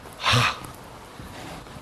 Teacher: It's a voiceless velar fricative. It's exactly like ka, except it's not a stop. It's a fricative.